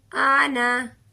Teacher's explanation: اس کا الف نہیں پڑھیں گے، اسے ہم آنا صرف لفظ ادا کریں گے، لمبا بالکل بھی نہیں کریں گے۔ آنا، اس کے ساتھ جو الف ہے، حالانکہ خالی الف اگر کسی الفاظ کے ساتھ آ جائے تو وہ الف مدہ ہوتا ہے اور اسے لمبا کرتے ہیں، لیکن بعد یہ جو نون کے ساتھ الف ہے یہ نہیں پڑھا جائے گا، اسے ہم آنا پڑھیں گے۔